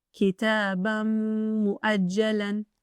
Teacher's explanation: It is not pronounced Kitaban mu'ajjalan. The correct pronunciation is to merge partially and have a nasal sound for 2 counts.